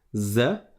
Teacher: donc on ne sort pas la langue cette fois-ci contrairement au zel